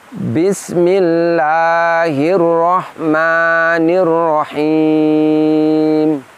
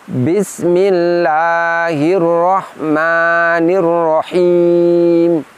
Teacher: terlalu mengangkat dan menekan lidah ke langit-langit sehingga bunyinya keluar tidak lembut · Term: ada tekanan